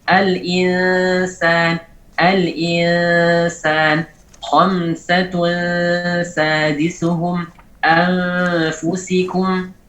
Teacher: gunnah pada nun yang diikhfakan itu suaranya muraqqaq, ditarkikkan atau ditipiskan ketika datang setelahnya huruf yang tarkik.